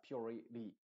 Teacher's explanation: una T entre dos vocales, suena como una R